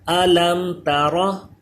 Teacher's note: اس میم میں غنہ نہیں ہوتا. اظہار شفوی ہے تو غنہ نہیں کریں گے